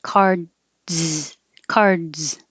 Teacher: airflow when it goes up for the D cards cards so there's a little delay because you have a pause for the blocking of the airflow · for cards your tongue completely blocks the airflow when it goes up for the D